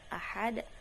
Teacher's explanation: Dal dibaca dengan suara yang terhenti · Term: huruf siddah